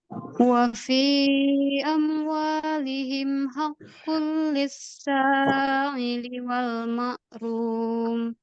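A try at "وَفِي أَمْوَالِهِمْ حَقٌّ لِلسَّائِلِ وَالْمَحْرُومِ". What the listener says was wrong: Oke, itu Hamzah ya, jangan mengarah ke huruf ain. Ulang, hakul. Coba dari hakul.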